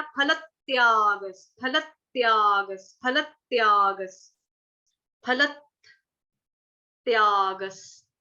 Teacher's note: फल के साथ हमने आधा त जोड़ देना, फलत त्यागस, फलत त्यागस, फलत त्यागस, फलत त्यागस। जो विसर्ग है विसर्ग का उच्चारण आधा स हलंत स से हो जाए